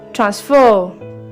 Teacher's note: ट्रांस को थोड़ा थोड़ा कम टाइम के लिए और फर को बहुत लंबे टाइम के लिए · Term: सेकेंड सिलेबल के ऊपर स्ट्रेस